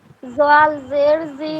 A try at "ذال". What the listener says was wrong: زال نہیں، ذال.